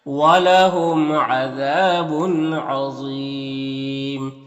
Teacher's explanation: यहाँ पर तनवीन के बाद आइन है हुरूफ हल्की में से तो तनवीन में इज़हार हकीकी होगा, ज़ा को पुर पढ़ेंगे और यहाँ पर वक़्फ़ करेंगे तो मद्दे आरिज़ वक़्फ़ी होगा